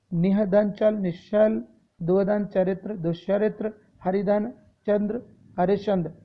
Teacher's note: विसर्ग सा तालुब्य वाले सा में परिवर्तित हो जाता है